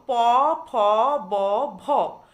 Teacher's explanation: অধর অর্থাৎ নিম্ন ঠোঁট গিয়ে কিন্তু ওপরের ঠোঁটকে স্পর্শ করছে, ফলে শ্বাসবায়ু নির্গমনে একটা ব্যাঘাত সৃষ্টি হচ্ছে, আর তাই এই ওষ্ঠ ব্যঞ্জন ধ্বনিগুলি উচ্চারিত হচ্ছে, তাই এদের বলছে ওষ্ঠ ব্যঞ্জন।